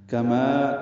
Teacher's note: کما کاف باریک ہے، ما الف مدہ ہے، دو حرکات لمبا ہے